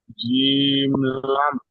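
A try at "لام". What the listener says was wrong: লাম, টান দিয়ে বলতে হবে।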